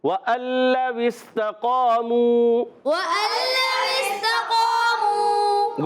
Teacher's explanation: قاف الف زبر قا، قاف کو ایک الف کھینچنا بھی ہے، قاف کا الف موٹا بھی کرنا ہے کیونکہ قاف خود موٹا ہے. قاف حروف مستعلیہ میں سے، یاد رکھیں جب حروف مستعلیہ میں سے کوئی بھی حرف آتا ہے تو وہ موٹا پڑا جاتا ہے، اور اس کے بعد جو الف آتا ہے وہ بھی موٹا ہو جائے گا.